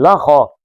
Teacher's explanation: لا پتلا ہے، خا موٹا ہے